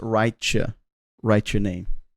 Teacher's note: you have a t sound at the end of a word and the next word starts with a a y the letter Y so you'll get a CH sound out of that